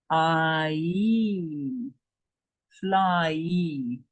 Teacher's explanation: But then it will be pronounced ai, as in fly. Then it's a diphthong.